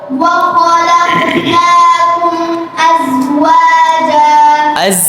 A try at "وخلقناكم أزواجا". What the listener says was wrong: জিব্বা বসা দেওয়ার দরকার নাই وخلقناكم أزواجا ওয়া ওয়া ওয়া أزواجا